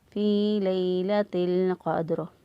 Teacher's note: لیلۃ القدر، تا کو لام کے ساتھ ملا دیا، ساکن حرف جو ہے وہ پیچھے والے جو متحرک حرف ہوتا ہے جس کے نیچے زبر زیر یا پیش ہو جس کے اوپر، اس حرف کے ساتھ ملتا ہے۔ اب یہاں پر تا کے نیچے زیر ہے تو تا کے ساتھ جو ہے وہ لام کو ملا دیں گے